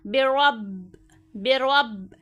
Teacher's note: نون مشدد اور میم مشدد میں ہمیشہ غنہ ہوتا ہے، تو یہاں پہ ہمیں ان دونوں کو نہیں کھینچنا، را موٹا پڑھنا ہے اور با پہ قلقلہ کرنا ہے